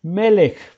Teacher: ¿Qué tengo que hacer? Debo acentuar la primera sílaba. Entonces, la manera de pronunciar este sustantivo es melech, porque aquí tenemos una men, un segol, un acento, lamed, segol, y esta es una kat sofi.